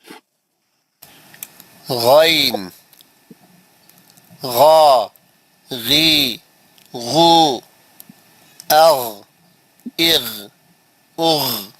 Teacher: موٹا آواز اوپری حلق سے · دیکھیے آپ غین کا آواز کہاں سے نکل رہا ہے، انہیں بتا رہا ہے کہ دس از pronounced from the highest part of the throat, یعنی اوپری حلق سے پڑھو. کیسا پڑھو بول رہا، غین غا غی غو اغ اغ اغ.